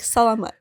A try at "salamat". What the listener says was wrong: You put the emphasis on the la. Just straight.